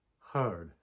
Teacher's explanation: So, for example, there is a voiceless H, something like the H in an English hard, and then there's a voiced H, right? Your vocal cords are vibrating as you articulate this fricative in your throat.